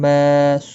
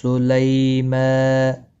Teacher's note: لئی یا لین ہے، تھوڑا نرمی کے ساتھ پڑھنا ہے، اور میم کے اوپر کھڑی زبر ہے، اس کو بھی ایک الف کے برابر کھینچنا ہوگا